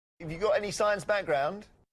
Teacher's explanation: the pitch starts low at the beginning and then goes slightly higher and keeps a similar level to the central of the sentence